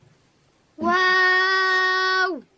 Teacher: واو ادا کیږي د دواړو شونډانو په راټولېدو سره